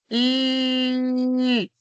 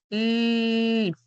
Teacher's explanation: tu lengua se va a apoyar en la zona alveolar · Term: sonidos alveolares